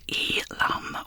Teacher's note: This is pronounced elam with the stress on the first syllable